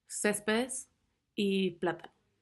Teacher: Esdrújulas, con acento en la antepenúltima sílaba. Todas llevan una tilde.